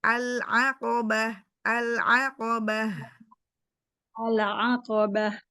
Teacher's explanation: lam sukunnya jangan memantul jangan tawalud ala ditahan dulu lidahnya